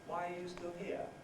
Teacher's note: if i were just interested in the answer i would use a high fall